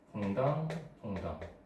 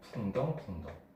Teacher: 앞에 거는 좀 더 밝고 좀 산뜻한 느낌이 나는데 반해서 뒤에 거는 좀 탁하고 무거운 느낌이 납니다. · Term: 양성모음